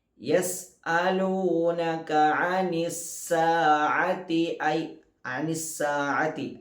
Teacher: ആ സീനിന് ശേഷവും ഐനുണ്ട്, തൊണ്ടയുടെ മധ്യഭാഗമാണ് അതിൻ്റെ മഖ്റജ്. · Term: ഐനിൻ്റെ മഖ്റജ്